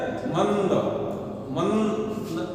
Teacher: अनुस्वार का उच्चारण जो है केवल नाक से बोलना होता है।